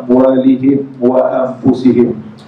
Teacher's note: Mim mati yang pertama bertemu dengan waw amwalihim, hukumnya izhar syafawi, dibunyikan mim dengan jelas tanpa dengung. Begitu juga mim yang kedua pun mim mati bertemu dengan waw juga, amwalihim wa amfusihim.